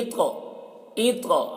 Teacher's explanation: تو میں بھی قلقلہ کر رہے ہیں اور تو کو موٹا کر کے پڑھ رہے ہیں